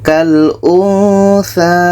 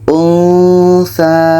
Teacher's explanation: Ketika sebut huruf nun, kita sudah merasakan huruf tsa. Untsa. Ada bunyi samarnya.